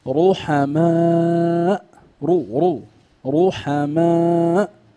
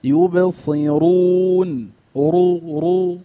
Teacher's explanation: اذا هنا الراء مفخمه